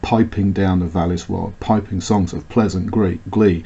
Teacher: We have the trochaic trimeter with the extra stressed syllable